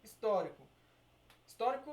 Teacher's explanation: histórico quatro sílabas tá aqui ó antepenúltima ela é a sílaba tônica então também está classificada como uma proparoxítona